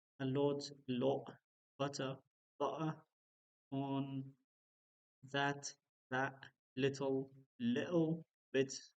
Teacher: Accents in London and mostly in British English T sounds are replaced with a glottal stop